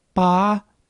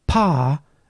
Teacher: There are numerous minimal pairs in Thai in which the only difference is that one has an aspirated p and the other has an unaspirated p. So, pa and pa mean different things in Thai.